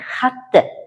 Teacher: o'zakdagi t tovushi affiks tarkibidagi ni aynan o'ziga o'xshash tovush tga aylantiradi · Masalan, misol keltiradigan bo'lsak, xatga biz tushum kelishlik qo'shimchasini qo'shamiz, ya'ni xatni demoqchi bo'lsak, assimilyatsiyaga uchraganda xatni, ya'ni bunda o'zakdagi t tovushi affiks tarkibidagi n-ni aynan o'ziga o'xshash tovush t ga aylantiradi